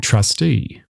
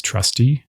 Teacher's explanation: Trustee ends with the long stressed vowel represented by the letter 𐑰. Trusty ends with the shorter unstressed vowel.